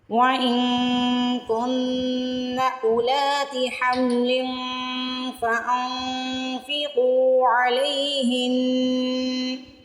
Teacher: وقف کیا، آواز کو آگے لے کے گئے. تشدید میں وقف کی صورت میں آواز کو آگے لے کے گئے اور غنہ بھی کیا